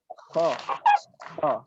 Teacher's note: Makhrajnya mungkin sudah tepat tapi sifatnya belum. Dia memiliki sifat isti'la, jadi harus kita baca tebal. Kha. Dan perhatikan ketika kita membaca huruf isti'la, ketika berharokat fathah tidak ada yang dimonyongkan bibir satupun.